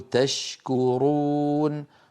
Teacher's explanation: اللسان مع الحنك اللحمي والعظمي ايضا ليس بينهما علاقه ولا ادغام نقول تشكرون ولا ندغم الشين في الكاف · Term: اظهار, إظهار